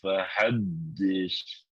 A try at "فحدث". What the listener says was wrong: Sa. sin. Bukan sin. Sa. Si. Su. Sa. Si, su. terlalu jelas sinnya. Dia bukan sin. Dia sa. Ya, jangan terlalu